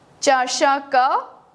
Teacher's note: that's called visarga, we actually pronounce it as h. आधा सा, half h.